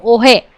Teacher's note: અહીં સુરતીમાં હ શ્રુતિનો અભાવ જોવા મળે છે